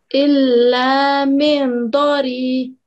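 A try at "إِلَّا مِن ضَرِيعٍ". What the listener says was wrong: And we should be able to hear the ayin in the end. Illa min dari.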